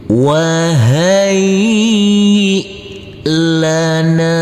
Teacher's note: baca dengan pelan-pelan dulu kita mulai Wai Lana kita Uraikan wahai huruf ya kita tekan dan kita Tahan saja dengan dua harakat karena di atasnya di atas huruf ya ada tanda baca tasdid